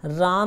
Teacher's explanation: राम में रा पे बल दिया जा रहा है, अधिक बल दिया जाता है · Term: बालाघात